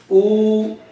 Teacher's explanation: the back part of the tongue, raised. The lips are protruded.